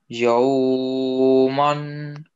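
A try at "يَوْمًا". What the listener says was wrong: That, you know, just gliding sound, not like yo. We cannot like say yo. It looks like yo, then you are prolonging like ruful madda.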